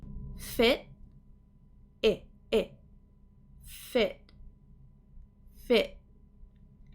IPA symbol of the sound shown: ɪ